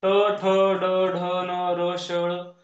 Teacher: ट ठ ड ढ न र शळ यांचा उच्चार मर्धा या भागावर आहे वरच्या दाताच्या मागे असलेली खडबडीत जागा असते त्याला आपण मर्धा म्हणतो आणि त्या वर्णा नाव दिल मर्धन्य वर्म